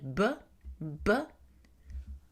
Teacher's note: il y a comme une explosion, B, parce que on bloque le passage de l'air et puis soudainement on le laisse passer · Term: occlusive bilabiale